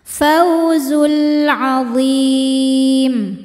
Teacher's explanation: Sebab alif lam menghadapi huruf qamariah yaitu ain. Maka lam sukun dibaca jelas atau disebut dengan izhar qamari